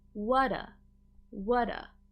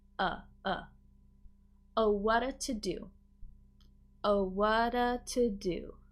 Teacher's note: a T between 2 vowel sounds, oftentimes we can link and make it more of a soft D sound, which we call a flap T. So what that ends up sounding like is whata, whata.